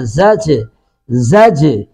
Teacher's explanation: زا کو سختی سے ادا کریں گے اور جیم ساکن پہ قلقلہ کریں گے